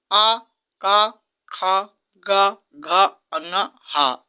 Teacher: कंठ से आ का ख ग घ अंग ह विसर्ग का उच्चारण स्थान होता है